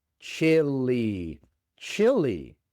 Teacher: Otra vez tenemos la i corta inglesa. E y la e al final se pronuncia como una i en español.